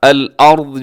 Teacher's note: را ساکن ہے، اور را ساکن سے پہلے زبر ہے تو را اس میں پر ہے، موٹی پڑھی جائے گی، اور آخر میں ضاد، حرف ضاد، اسے بھی اپنے موٹا پڑھنا ہے۔